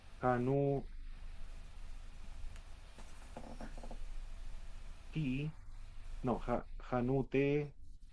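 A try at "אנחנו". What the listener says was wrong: Esa sería una het. Aquí sería, anaj, porque tenemos el cheva con la pataj, anaj, sí, anajnu,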